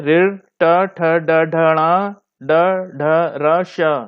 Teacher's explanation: ऋ, ट, ठ, ड, ढ, ण, ड, ढ, र, श, मूर्धा और जीभ, तो ये मूर्धन्य श्रेणी हो गई।